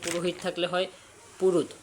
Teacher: আধুনিক চলতি ভাষায় অনেক সময় দুটো স্বরের মাঝে হকার লোপ হয়